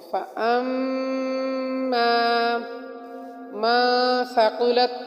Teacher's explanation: من نون ساکن ہونے کی وجہ سے اخفا ہوگا